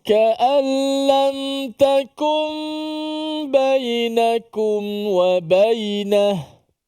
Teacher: Takum dipanjangkan gunnah, nun bertemu dengan ba. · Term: iqlab